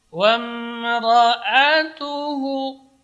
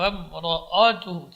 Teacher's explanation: وامرأته حمالة الحطب, wa tipis. Wamra'atuhu, jadi ra-nya tebal, a-nya tipis. Wamra'atuhu, tidak, a-nya tidak boleh tebal, jangan wamra'atuhu, tidak boleh.